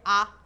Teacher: विवृत में होता है सबसे ज्यादा मुंह खुलता है आ, बोल के देखिए आ, ज्यादा मुंह खुल रहा है।